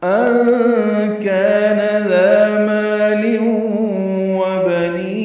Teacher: ان کان نون ساکن کے بعد کاف آنے کی وجہ سے اخفاء نون کی آواز چھپائیں گے